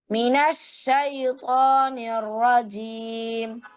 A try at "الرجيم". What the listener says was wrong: র আর একটু মোটা, নিয়র রজি, এভাবে নিয়র, নিয়র রজিম।